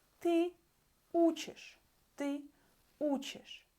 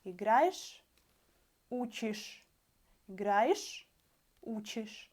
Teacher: Ending is not stress, and we say играешь. And in the end, we hear only this ish